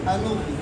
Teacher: یہ حمزہ کے اوپر جو پیش ہے، یہ پیش نقل کر کے اس نون کو دیتے ہیں